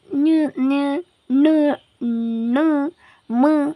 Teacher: ಮೂರನೆಯದು ಅನುನಾಸಿಕ ಅಕ್ಷರಗಳು. ಮೂಗಿನ ಸಹಾಯದಿಂದ ಉಚ್ಚರಿಸಲಾಗುವ ವ್ಯಂಜನಗಳನ್ನು ಅನುನಾಸಿಕ ಅಕ್ಷರಗಳು ಎಂದು ಕರೆಯುತ್ತಾರೆ. ಉದಾಹರಣೆ ಞ ಞ ಣ ಣ ಮ ಇವು ಅನುನಾಸಿಕ ಅಕ್ಷರಗಳು.